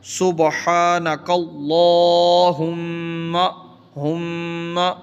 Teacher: ہم پہ غنہ کرنا ہے، تھوڑی دیر رکنا ہے، سبحانک اللہم ہم۔